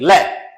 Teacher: जब प्राण वायु बाहर निकले तो जीभ का जो अगला भाग है वो मसूड़े को टच करेगा, और मसूड़े को टच करने के बाद हवा है वो जीभ के आर पार निकलती हुई नजर आएगी। जीभ के आर पार निकलती हुई नजर आएगी, उसको बोलते हैं पार्श्विक व्यंजन।